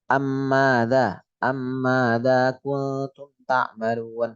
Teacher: Mim yang pertama harus masuk yang kedua dan itu jelas ya. Hurufnya dibaca sekali. Jadi bertasydid. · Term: idgham mimi